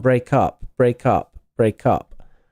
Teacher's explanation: Phonemically, break up, something like break up, like this. You can just say it as one word, break up, in terms of sound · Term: linking